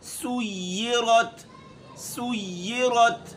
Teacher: سُيِّرَتْ سین کے اوپر پیش ہے، ہونٹوں کو گول کریں گے۔ را تا زبر رت، رت را باریک ہے اور تا کو را موٹی ہے اور تا کو ہم باریک پڑھیں گے۔